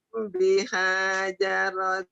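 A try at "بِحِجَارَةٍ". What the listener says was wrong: Jangan dihajar. Jangan dihajar. Jangan dihajar. Bihija. Jangan dihajar. Bihija. Bihija.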